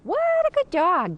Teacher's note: a praise tone of voice, which is high-pitched and pleasant in intonation.